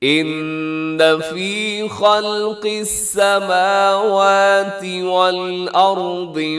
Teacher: ان نون مشدد ہے تو کریں گے یہاں پہ غنہ زمانی